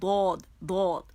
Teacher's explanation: یہ حافت اللسان سے ادا ہوتا ہے جو زبان کے موٹے کنارے ہوتے ہیں